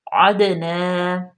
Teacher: عین پہ زبر ہے، دال ساکن ہے اور دال قلقلہ ہوگا